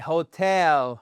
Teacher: Accentuation sur notre seconde syllabe.